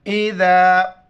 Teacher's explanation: ذال کے وقت زبان باہر نکالنا ہے